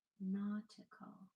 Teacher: There's a schwa. There's a very subtle schwa there at the end.